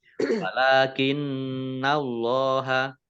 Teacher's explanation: Allahnya nun tasdid dibaca mendengung ya, ditahan 2 harokat. Kemudian Allahnya dibaca tebal karena harokat di depannya fathah.